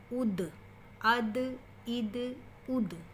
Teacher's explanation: اب الف زبر یا حمزہ زبر دال اد، اس کو آپ نے ہلا کے پڑھنا ہے۔ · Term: حروف قلقلہ